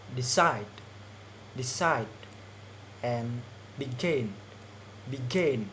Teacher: stress on the last syllable. We can find in verb with 2 syllables